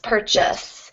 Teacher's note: the stress will go on the first syllable